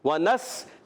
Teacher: نون کو سین سے ملانا ہے، سین سیٹی کے ساتھ